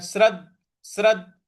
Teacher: जो द है उस पर हमको आघात देना है। श्रद्ध श्रद्ध ऐसे बोलना है।